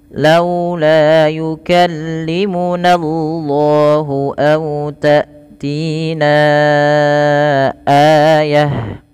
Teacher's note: Yukallimunallahu, hati-hati jangan menebalkan di sini lafal nanya, jangan nallah, tapi na tipis, baru Allah yang tebal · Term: lam tafkhim